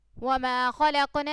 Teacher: تو جب یہ قاف دیکھیں قاف ساکن ہے تو یہ حروف قلقلہ میں سے ہے، اس لیے ہم نے اس کو یہاں پہ تھوڑا سا ہلا کر پڑھا. خا جو ان سے موٹے حروف میں سے ہے، اس لیے ہم نے اس کو تھوڑا سا موٹا کر کے پڑھا.